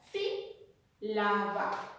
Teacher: Por ejemplo, la misma palabra sílaba lleva la mayor fuerza de voz en la antepenúltima sílaba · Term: esdrújulas